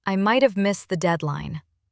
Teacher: He stressed might, and his voice dipped with regret.